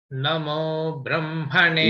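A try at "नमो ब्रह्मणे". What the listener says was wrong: Namo. Again, that also going down. Namo.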